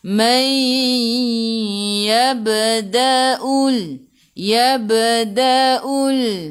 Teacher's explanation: Ba qalqalah sughra, apabila ada huruf qalqalah di tengah-tengah ayat, ada baris sukun, kita kena melantun. Lantunannya kecil sahaja.